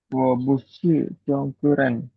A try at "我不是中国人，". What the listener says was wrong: B itu dibacanya P. Jadi BU bacanya pu. Oke, wo pu.